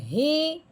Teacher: موٹی ہاں حلق کی گہرائی سے نکلے گی، ہاں زیر ہی۔